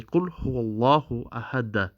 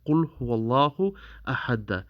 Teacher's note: you would say ahad, okay, but you would produce an echo sound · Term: Qalqalah Kubra